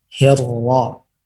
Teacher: ra yang tipis ketika kasrah tarqiq namanya maka lidah belakang itu ke bawah